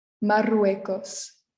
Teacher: The double R is a little longer than our single R